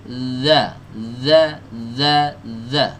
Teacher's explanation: Zal yang ini, dal yang ada titiknya itu tempat keluarnya dari ujung lidah ya, ujung lidah ketemu dengan ujung gigi seri atas.